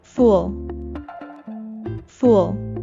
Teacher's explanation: Note that the double O in fool is an sound, which we pronounce by raising the back of our tongue while rounding our lips and moving them forward a little